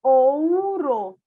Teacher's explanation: a sílaba ou tem uma vogal O e tem a semivogal U